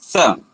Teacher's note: जब दंत सकार बोलेंगे तो जिह्वा का जो आगे वाला भाग है वो दांत के पास जाएगा